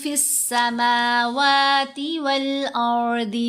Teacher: سین سے پہلے الف اور لام نہیں پڑھے جا رہے، حمزہ سے پہلے لام پڑھا گیا۔ حمزہ حروف قمری میں سے ہے، سین حروف شمسی میں سے ہے۔